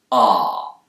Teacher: British speakers, especially those in the south of England, will use a more back vowel sound here, ah. But Americans will tend to use a more front vowel sound. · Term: Bath vowel